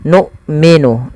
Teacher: sifatnya salah satunya adalah sifat syiddah, yaitu tertahannya suara, dan yang kedua jahar, tertahannya nafas kita. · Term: hamzah sukun